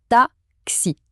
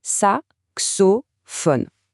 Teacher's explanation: Pour se faire une idée, c'est exactement le même X que dans le mot anglais box. C'est vraiment le son d'un K et d'un s qui sont collés ensemble. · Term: son K, le son K